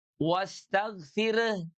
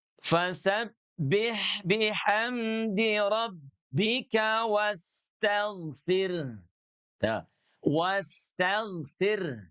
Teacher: huruf 'ro' tipis, huruf 'H' masih terbaca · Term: H sukun